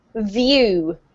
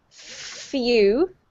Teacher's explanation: The difference between the V and the F is that the F doesn't have any vocalized sound coming out